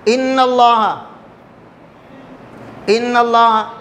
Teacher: وصلی ہوگا. یعنی جب بھی کلمے کے درمیان میں آئے گا تو لام تعریف کا حمزہ نہیں پڑھا جائے گا